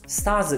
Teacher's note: この▁R▁の発音言っていません